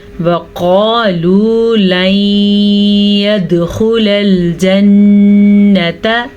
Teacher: यहाँ पे कलकला भी हो रहा है दाल के ऊपर साकिन की वजह से